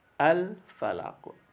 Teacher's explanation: huruf qaf juga dibaca memantul pada kalimat al-falaq karena qafnya dimatikan atau disukun walaupun harokatnya kasroh, tapi karena waqaf ya berada di akhir ayat, makanya qaf tetap dibaca memantul al-falaq.